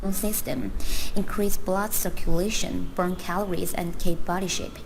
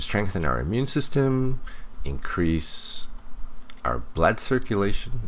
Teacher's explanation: I didn't hear any rising intonation before she mentions the next item in the list.